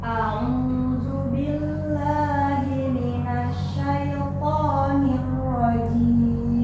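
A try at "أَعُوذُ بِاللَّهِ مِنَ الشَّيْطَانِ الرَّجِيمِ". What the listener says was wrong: Sini tekan dikit lagi. Minasya. Nah, jadi tasydidnya hati-hati, ada penekanan minasya.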